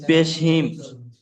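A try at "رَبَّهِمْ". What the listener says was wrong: পেশ নয় জের, জের দেখতে পাচ্ছেন না, হায়ের নিচে জের আছে। বিহিম, বাজের বি, হামিম জের হিম, বিহিম।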